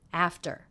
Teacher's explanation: the second syllable very low in pitch flat and quick